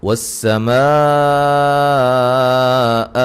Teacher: میم پہ مد واجب ہے، 3 سے 4 الف کے برابر آپ اس پہ مد کریں گے